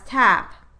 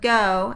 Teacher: the change in place of articulation of a consonant from a more back to a more front articulatory position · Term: fronting